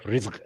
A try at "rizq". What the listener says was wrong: Just to clarify that, because the way you said it sounds like risk. Allah give a lot of risk, not R-I-S-K, R-I-Z-Q, a lot of provisions.